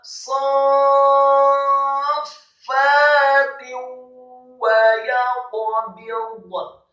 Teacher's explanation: sadnya dibaca tafkhim dengan posisi bibir bawah agak tertutup